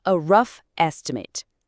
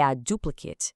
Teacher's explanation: o som é reduzido, fica curtinho, it, bem parecido com it